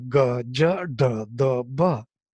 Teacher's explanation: these soft or voiced consonants, as we call them, with alpa prana, with no aspiration